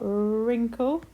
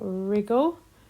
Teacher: So it's a silent W. You can hear the r, but not the W.